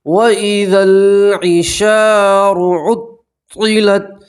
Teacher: الف مدہ ہے اس لیے آپ ایک الف کے برابر کھینچیں گے